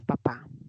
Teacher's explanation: Cuando el labio inferior se une al labio superior, en P de papá, ahí no hay salida del aire. Se ha producido una obstrucción y eso es lo que denominamos una oclusiva.